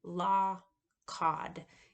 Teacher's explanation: my open O, ah, law, and script A, as in cod, are very similar. Law, cod. You can see my mouth isn't very different, but the point vowel A, script A, should be low back, tense, and unrounded.